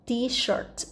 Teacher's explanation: chữ sh này mình phải đọc âm s dài